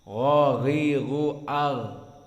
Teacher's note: adnal halq, di mana dia paling depan dari makhraj kerongkongan. Maknanya adna ay qaruba ila lisan, mendekati kepada lisan, adnal halq, dan dia bertetanggaan dengan kha.